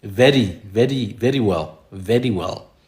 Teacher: The Queen of England, the late Queen of England, Elizabeth, she likes to use the tapped R a lot.